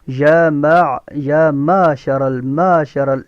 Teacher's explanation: یا معشر یہ حمزہ نہیں ہے، عین ہے. عین کو صفائی سے پڑھنا ہے اور یا کو تھوڑا سا کھینچ کے کیونکہ اس کے اوپر کھڑی زبر ہے